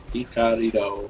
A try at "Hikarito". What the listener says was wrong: You're like Rito. You're like trying to roll the R. It's Rito. Maybe it's Hikarito.